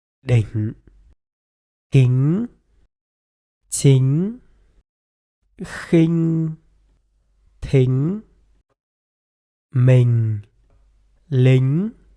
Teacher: when the ñ sound follows the e vowel, it is pronounced like the ng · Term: ñ ending